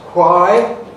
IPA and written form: hwaɪ (why)